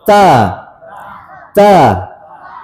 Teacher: Ta. Ada sedikit udara yang keluar.